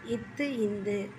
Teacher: மேல்வாய்ப்பல்லின் அடியை நாக்கின் நுனி பொருந்துவதால் பிறப்பது இத்து இந்து.